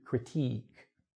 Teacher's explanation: when you say critique, it's a long sound. It's the long e